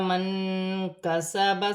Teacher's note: نون ساکن میں اخفا ہوگا، کاف حرف اخفا میں سے ہے